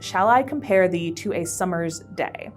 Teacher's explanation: So the first line of sonnet 18 is, "Shall I compare thee to a summer's day?" This is an iambic pentameter, as a lot of Shakespeare stuff is. So shall I is one iamb, with shall being the unstressed syllable and I being the stressed syllable. Compare is one iamb, com being the unstressed syllable, pair being the stressed syllable.